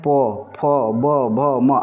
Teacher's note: इसको ओट व्यंजन कहते हैं जो कि होठों की मदद से उच्चारण उच्चारित होते हैं